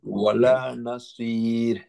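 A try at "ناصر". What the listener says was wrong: নাসীর, সি heavy, নাসীর।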